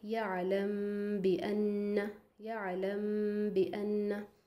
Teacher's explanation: इख़फ़ा again हमको पता है इख़फ़ा का माना है छुपाना, ठीक है। तो मीम साकिन के बाद अगर बा आए तो मीम की आवाज़ को बा में छुपा कर पढ़ेंगे। वाज़े रहे कि होंठ ज़्यादा नहीं मिलने चाहिए, गुन्ना भी करना है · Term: इख़फ़ाए शफ़वी